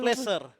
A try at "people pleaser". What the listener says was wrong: Bukan pleasure tulisannya. Pleaser.